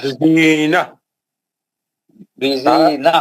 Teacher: بزینہ تا مربوطہ جو ہے وہ ہا سے بدل جاتا